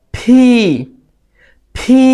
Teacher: ফি ফি এটা বলার সময়ও খেয়ে যেভাবে বলেছি পি সেম ভাবে সজোরে বাতাস বের করে বলতে হবে যেটাকে আমরা বলি অ্যাসপিরেটেড সাউন্ড